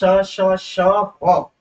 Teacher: जब वायु मुंह में आती है तो उच्चारण स्थान के इतना नजदीक जीभ आ जाती है कि वो दोनों के बीच से रगड़ती हुई निकलती है, तो उन्हें ऊष्म व्यंजन कहते हैं।